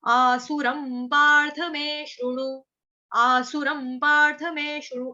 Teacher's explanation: आसुर के ऊपर जो अनुस्वार है उसका उच्चारण आधा म